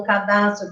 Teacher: o assento recai sobre das